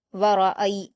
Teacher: रा पर जबर की हरकत है इसलिए इसको पुर पढ़ा जाएगा